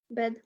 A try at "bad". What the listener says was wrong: bad. Let's get that pronunciation right. Not bed. Bad.